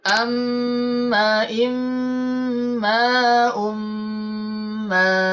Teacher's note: ya jadi pertemuan mim dan mim ketika ada mim sukun ya mim sukun bertemu dengan mim berharakat dan bertasdid maka suara mim berharakat dan bertasid ditahan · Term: idgam Mimi, idgham mimi